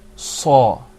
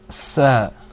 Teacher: The sad is full-mouthed. You purse your lips when you say it. Whereas the seen, you're going to open your mouth and pull the corners back a little bit.